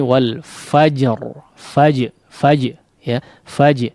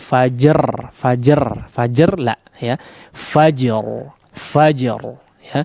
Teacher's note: Ada qalqalahnya terlebih dahulu baru masuk kepada huruf ra. Namun jangan juga memantul atau pantulannya tidak alami.